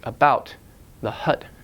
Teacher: what matters is the schwa is extra short you pronounced extra short extra light · The schwa occurs in unstressed syllables like the, so like the hut.